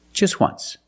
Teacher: W, once. So phonetically, the T is between consonants. So it's silent.